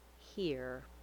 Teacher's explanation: In the word here, make sure you use a tight back American R. We glide from the high front E vowel to American R, here. Make sure you don't leave off the H sound or make too much noise in your throat.